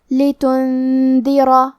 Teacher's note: کلمت لتنذر میں نون ساکن ہے، پھر حرف الدال ہے. دال حروف الاخفاء میں سے ہے تو ہم یہ حکم کو غنہ کے ساتھ ادا کریں گے